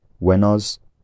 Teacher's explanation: by veret law would have voiced the final consonant giving wenos the vowel in the last syllable would unround and possibly lower slightly